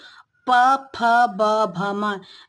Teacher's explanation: ये जो हमारी दोनों ओष है उनका स्पर्श करके हम इन वर्णों का उच्चारण कर सकते हैं